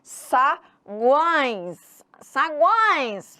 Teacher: tio O tio também é nasal saguões salões Samuel Sagan Uai então sai pelo nariz é só nasal